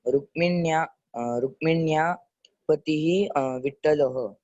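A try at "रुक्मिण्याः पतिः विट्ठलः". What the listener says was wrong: Very good. Rukminyaha. Don't forget that ha. Visarga.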